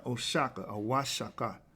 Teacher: The O in the Spanish codices is pronounced wa. The X in the Spanish codices is pronounced sh, because they couldn't pronounce every word that the Nahuatl people or the Mexica people were speaking, because, first of all, in Spanish, you don't have the sh. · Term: the sh sound